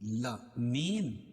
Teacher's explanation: عالمین کھڑا زبر قائم مقام الف مدہ کے اس کو ایک الف کے برابر کھینچ کے پڑھیں گے